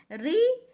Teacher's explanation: है स्वर है तो इसका उच्चारण स्थान मूर्धा अवश्य है लेकिन ऋ के उच्चारण में हमारी जीभ मूर्धा को स्पर्श नहीं करती है